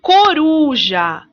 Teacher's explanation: A sílaba mais forte da palavra coruja é uru. No nosso posicionamento, uru é a penúltima sílaba. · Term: sílaba tônica